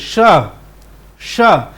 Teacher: तालव्य श का उच्चारण यदि हम करेंगे तो जिह्वा जो है वो तालु के पास होनी चाहिए। मूर्धन्य श का उच्चारण करेंगे तो जिह्वा जो है वो मूर्धा के पास होना चाहिए।